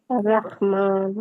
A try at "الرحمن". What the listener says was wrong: اچھا تھوڑا خواہ کی طرف جا رہے ہیں زبان اوپر نہ لے کے جائیں. سیدھا سیدھا رکھے. بس یہ ہاں یہ پہلے خواہ بن رہی تھی، مطلب تھوڑی زبان پر جا رہی تھی. اس کو سیدھا رکھے، اسٹف نہ کریں نا، نارمل نارمل سا رح. رح.